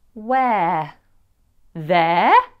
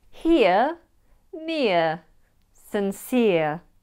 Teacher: E-R-E can be pronounced as air in words like where, there, or it could be pronounced as ear in here, near, sincere.